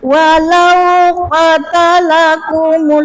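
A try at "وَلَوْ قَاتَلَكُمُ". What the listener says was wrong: Qatalan. Panjang. Qotnya panjang. Qot panjang.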